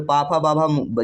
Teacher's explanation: जब बोलते हैं हमारे ओठ क्या है? दोनों में टकराते हैं। दोनों आपस में टच करते हैं। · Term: ओष्ठ उच्चारण स्थान